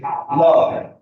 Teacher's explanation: তোমার জিভটা দাঁতে লাগে আর দুই পাশ দিয়ে বাতাস বেরিয়ে যাচ্ছে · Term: পার্শ্বিক ধ্বনি